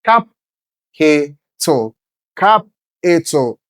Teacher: Having stress on the first syllable.